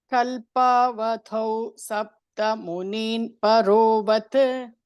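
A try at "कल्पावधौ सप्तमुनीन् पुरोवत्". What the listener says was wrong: ಅದು ಪರೋವತ್ ಇಲ್ಲ, ಪುರೋವತ್.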